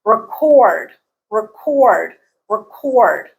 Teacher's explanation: the stress changes from the first syllable to the second syllable